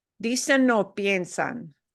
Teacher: we've got an N that slides into that little word o